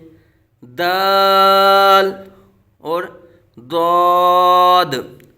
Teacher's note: दाल का मखर भी अलहदा है जुबान की नोक और ऊपर के दांतों की जर से